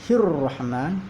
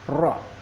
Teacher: Kemudian ro, ada hukum di situ yaitu ro tafkhim, yaitu ro dibaca tebal karena ro mempunyai harokat yang fathah